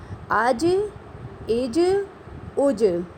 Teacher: جیم کلکلا ہے، اس لیے اس پر بھی آپ کی آواز جو ہے وہ مخرج سے دوبارہ لوٹ کر آنی چاہیے